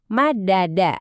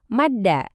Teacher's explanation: Dengan sihir idgam, dua huruf dal ini melebur. Hasilnya madda.